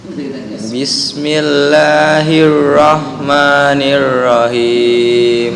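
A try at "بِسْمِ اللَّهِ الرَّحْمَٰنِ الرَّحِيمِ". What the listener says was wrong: Nirra. Tafkhimnya ya. Bismillahirrahmanirrahim. Bukan nirra. Bismillahirrah. Itu tafkhimnya kurang. Ra maksudnya menggetarkan ra-nya dihilangkan udah bagus, tinggal di tafkhim. Tahu tafkhim ya? Pernah belajar apa arti tafkhim? Tebal. Bismillahirrahmanirrahim.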